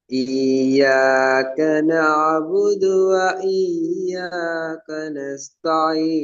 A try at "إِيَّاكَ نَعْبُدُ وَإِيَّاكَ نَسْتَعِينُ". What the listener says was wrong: ஏன் நஸ்தானில கூடுதல் நீட்டணும்? யா வந்தாலும் அலிஃப் வந்தாலும் வித்தியாசமா? இயலாது. எல்லாம் மதுரை எழுத்துக்கள் தானே. வா வந்தா ஓரளவு, யா வந்தா ஓரளவு, அலிஃப் வந்தா வேற அளவுன்னு சொல்லி போக இயலாது.